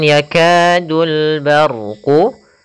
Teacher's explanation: adanya fathah bertemu dengan alif kita panjangkan untuk huruf kafnya sepanjang dua harakat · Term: Mad thi'i